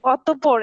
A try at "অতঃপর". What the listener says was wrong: অতঃপর, অতঃপর, পতে প দুইবার উচ্চারণ হবে, অতঃপর, অতঃপর না। প দুইবার উচ্চারণ হবে, অতঃপর শব্দের মধ্যে প দুইবার উচ্চারণ হবে। শোয়া সাউন্ড, শোয়া সাউন্ড কিন্তু রুলের ভিতরে, শোয়া সাউন্ড রুলের বাইরে না।